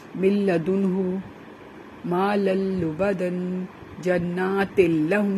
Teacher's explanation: یہ دیکھیں ہم نے لام کی ساؤنڈ دی ہے، اس میں غنہ نہیں ہوا. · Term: ادغام بلا غنہ